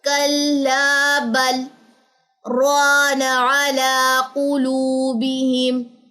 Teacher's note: تو سکتے میں آواز کو آپ نے روکنا ہے 1-2 سیکنڈ کے لیے، اور آپ نے اپنی سانس نہیں توڑنی